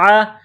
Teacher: گلے کے درمیان سے زور لگا کر عین کو نکالیں گے